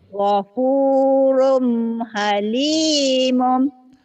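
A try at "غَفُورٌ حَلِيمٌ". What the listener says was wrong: Gopurun halimun jangan halimum. Halimun N ujungnya N. N. N ujungnya. Run. Ghafurun halimun. Ghafurun halimun.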